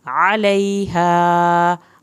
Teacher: عین کو حلق سے پڑھنا ہے، لئی یہاں پہ یا ساکن کو کھینچنا ہے، علیہا ہا کی الف کو کھینچ کے پڑھنا ہے۔